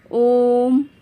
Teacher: प्लुत स्वर इन स्वरों के उच्चारण में तिगुना समय लगता है